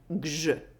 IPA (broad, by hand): gʒ